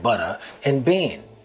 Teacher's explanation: The softening of the T's, where butter and bent would sound like butter and bean.